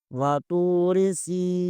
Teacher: را کے نیچے زیر ہے، را کو بریک پڑھیں گے، واتوری سین کے نیچے زیر ہے، سین زیر کے آگے یائی مدہ ہے، اسے بھی ایک الف کے برابر کھینچیں گے۔